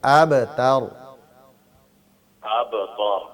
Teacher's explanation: تا باریک ہوگا، را موٹا ہے لیکن تا کو موٹا نہیں کرنا، ابتر أَبْتَرُ تھوڑا سا باریک کریں، ابتر ماشاءاللہ۔